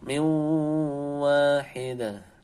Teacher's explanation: langsung nunnya melebur ke wawnya, wawnya didengungkan. Nun sukun ketemu waw. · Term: idgham bi gunnah